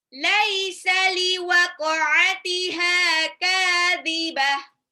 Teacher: Tak marbuta di belakang menjadi ha sukun. Ha yang tebal ya.